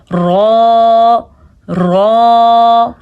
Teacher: زبان کا آگے والا حصہ جب سامنے کے اوپر کے دانتوں سے ٹکراتا ہے تو رو ادا ہوتا ہے